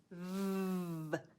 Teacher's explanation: The V sound continues. So it doesn't stop, it continues as the air passes through your lips. So it's also a vibration in your throat.